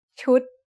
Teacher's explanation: It's a low-class consonant with a dead syllable and a short vowel that makes it high tone.